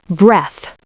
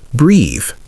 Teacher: Breath is short and stopped. Breathe is longer and open.